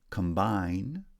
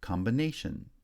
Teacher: combine becomes combination where primary stress on the second syllable in combine is shifted to the third syllable in combination secondary stress then is placed on the first syllable in combination